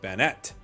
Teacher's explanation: According to official sources, it's pronounced Bennett. Emphasizes on the second syllable.